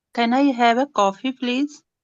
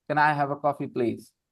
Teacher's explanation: When you say the coffee, your voice goes up.